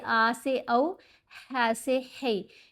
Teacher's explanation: لین حروف کو نرمی سے پڑھتے ہیں. زبر زیر پیش کی طرح کی آواز نہیں ہوتی، درمیانی سی آواز ہے، مڑ جانے والی، ٹیڑھی ہو جانے والی آواز، جیسے آ سے او، ہا سے ہے.